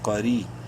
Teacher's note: را کو یا سے ملاتے وقت ایک الف کے برابر لمبا کریں گے، یا مدہ ہے لیکن را کو باریک پڑھیں گے زیر کی وجہ سے